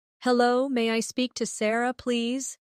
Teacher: Notice how may I sounds like maya in fast speech.